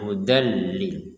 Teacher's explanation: Dimasukkan tanwinnya kita masukkan ke huruf lam sehingga kita membacanya hudallil. Jadi bukan membacanya hudan ya. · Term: idgham bila gunah